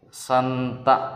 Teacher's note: సున్నా అనేది అనునాసికం దీన్ని నాసిక సహాయంతోనే పలుకగలుగుతాం గాలి బయటకు వదలడం ద్వారానే